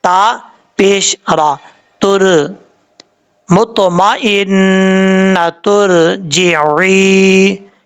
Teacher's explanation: دونوں آیتوں کو ملا کے پڑھیں گے تو پھر تا کو را کے ساتھ ملا کے پڑھا جائے گا. تا پیش را, تر مطمئنہ ترجعی, اس طریقے سے را ساکن سے پہلے پیش ہوگا تو را کو پر پڑھا جائے گا.